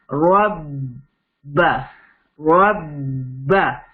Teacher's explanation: را کو با میں کنیکٹ کیا، را فرکشن آف سیکنڈز کے لیے ہولڈ کیا، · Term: کنیکٹ اینڈ ہولڈ